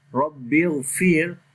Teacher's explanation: in the second Ra this we read in light sound due to sukoon sign on the Ra, and there is kasra before the Ra, that's why this Ra will be light.